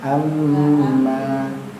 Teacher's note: Nah, amimnya agak panjang, dengungnya agak panjang.